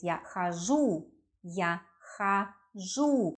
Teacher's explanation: Because у is stressed, we pronounce а in the first syllable. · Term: stress is on у